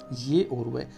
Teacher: वे वर्ण जिनका उच्चारण करते समय हवा बिना संघर्ष के बाहर निकल जाती है वह संघर्षहीन व्यंजन या अर्ध स्वर कहलाते हैं।